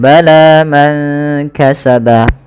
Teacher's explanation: panjangkan huruf lanya sepanjang dua harakat. Karena la di sini ada alif kecil yang datang setelahnya dan ia berada di atas huruf ya. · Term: mad thabi'i, mad tabi'i